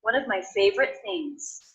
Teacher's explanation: I noticed that I am making that a stop T I'm not releasing it I'm going straight into the th